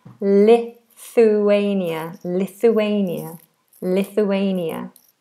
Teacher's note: We have that th which is the tongue out between the teeth.